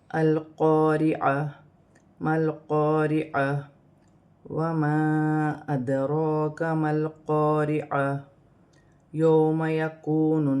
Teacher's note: لام ساکن ہے، لام کو حمزہ کے ساتھ ملا کر پڑھا جائے گا